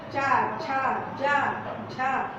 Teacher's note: यह है तो ऊपरी छत, ऊपर का तालू का, लेकिन थोड़ा सा पीछे